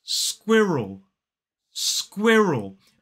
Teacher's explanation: So it's s, k, w, I, We voice the R in this word, and then we have the dark L as an isolated word. And that sound is more like an ul.